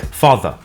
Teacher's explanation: Notice that the final R sound is not pronounced in British English. Father ends in a simple schwa vowel